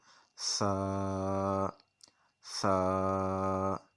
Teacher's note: हम ज़ुबान को सामने वाले दो दांतों के नीचे लगाएंगे तो फिर इसको अदा करेंगे ताकि सीटी की आवाज़ पैदा ना हो